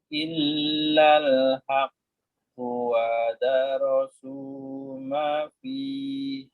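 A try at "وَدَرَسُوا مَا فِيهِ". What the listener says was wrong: Ma-nya 2 harokat. Itu 2 harokat semuanya ya. 3-3 itu.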